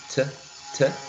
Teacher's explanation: So coincidentally, if you remember the pronunciation of T, when you say T, T, T, the tip of the tongue is touching the alveolar ridge. So yes, there would be, before disappearing, as Cristel said, the T sound is influencing, right, the previous sound in terms of place of articulation.